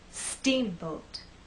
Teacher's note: the first part of the word is the stressed part so when we say Steamboat I want the first part to be loud and the second part to be softer